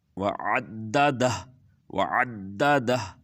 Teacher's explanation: لمزہ تی پڑھیں گے تو پھر لمزاتی نلذی جمع مالا وعددہ، وعددہ، دہ، یہاں پر بھی ہا کے اوپر پیش تھی، ہم جب رکیں گے اس آیت پر تو ہا کی پیش جو ہے وہ اس کی پیش ختم ہو جائے گی اور دہ پڑھیں گے۔